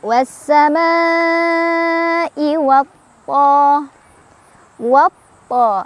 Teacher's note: Karena ada alif lam bertemu huruf syamsiyah yaitu tha. Cara bacanya alif lamnya dilewat, jadi kita langsung baca ke tha, diidghamkan. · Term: idgham syamsiyah